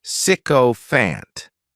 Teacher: This word has 3 syllables, and the stress is on the first syllable, sycophant. The spelling may throw people off from the pronunciation, but that as is just pronounced sick.